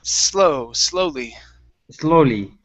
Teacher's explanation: Now, here you said slowly with the Z sound. Instead of a Z, give me an unvoiced S.